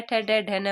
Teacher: मूर्धन्य में क्या आते हैं? ट, ठ, ड, ढ, न वाले आते हैं